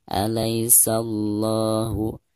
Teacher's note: Di sini dianggap lam jalalah tafkhim atau lam jalalah yang terdengar kental. Karena sebelum huruf lam jalalah itu, ada huruf dengan vokal fathah. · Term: lam jalalah tabkhim